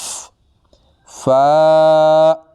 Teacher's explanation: فا 1 الف کی مقدار لمبا